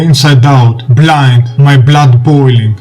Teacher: Alliteration of the consonant B is utilized in this passage, and also because the consonant B when uttered produced a plosive sound, thus the words in this example are hard sounding